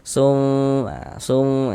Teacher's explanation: disamarkan sum sum dengan bersiap-siap masuk ke dalam huruf ikhfanya sum kemudian di dengungkan. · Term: ikhfa hakiki